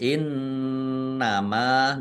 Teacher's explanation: Innama nun tasdid dibaca ghunah atau mendengung ditahan dua harakat biar tampak dengungannya. Kemudian mim fathah alif mad thobi'i panjang dua harakat.